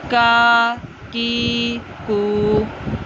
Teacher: इस काफ को पुर मोटा, जहाँ हमारा कौवा है ना वहाँ से इसका मखरज है, वहाँ से इसको मोटा करके अदा करेंगे।